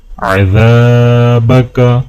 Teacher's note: دال کو الف کے ساتھ ملاتے ہوئے ایک الف کے برابر کھینچیں گے